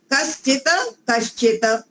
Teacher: दंती सकार का तालव्य सकार हो गया